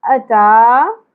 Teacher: حمزہ کے اوپر زبر ہے، آدھی الف یا ایک ہی حرکت ہے، زیادہ نہیں کھینچنا